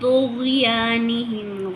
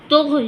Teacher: غین حروف قلقلہ میں سے نہیں ہے تو ہم نے یہاں پر قلقلہ بھی نہیں کرنا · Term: قلقلہ نہیں کرنا